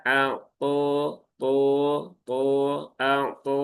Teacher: Huruf th ini ada ee fathah berdiri. Jadi pastikan huruf th-nya panjang dua harakat